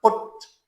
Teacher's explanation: पा और टा के दरमियान वेरी शॉर्ट ऊ साउंड